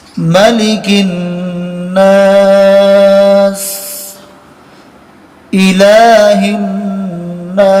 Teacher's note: یہ نون کے اوپر جب تشدید آئے گی تو ایک الف کے برابر ناک میں غنہ کریں گے